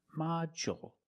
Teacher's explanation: With module, the stress is on the first syllable. So the second syllable is short.